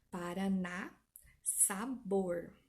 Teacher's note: Última sílaba tônica, a palavra é chamada de oxítona.